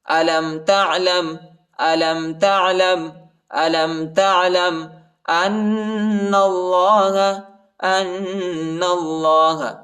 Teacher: حمزہ کو نون کے ساتھ ملائیں گے اور غنہ کریں گے، نون کو لام کے ساتھ ملائیں گے اور اللہ کے نام کو موٹا پڑھیں گے، پر پڑھیں گے۔